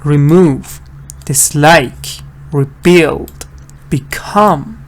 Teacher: stress is not on the first part, it's on the second part.